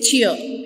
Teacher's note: if you just say the word cheer simply, you just say cheer and R is silent